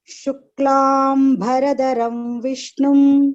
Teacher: you are giving a Mahaprana at Bha, which should be Alpa Prana. The Mahaprana is only for Dharam.